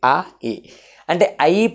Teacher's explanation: ఆ ఇ రెండు కలిపితే ఐ అనే సౌండ్ వస్తది అ ఇ అంటే ఐ పలకాలంటే ఆ తో ఆ ధ్వనితో ప్రారంభమై ఈ ధ్వనితో అంతమవుతుంది. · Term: కంఠ్యతాలవ్యాలు